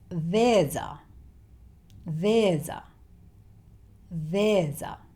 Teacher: these two words tend to be joined together, when spoken, to make one long word.